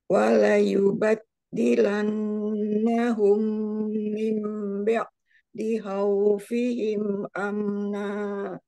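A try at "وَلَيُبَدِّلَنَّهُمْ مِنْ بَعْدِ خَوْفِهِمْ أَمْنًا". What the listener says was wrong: Iya, Masya Allah.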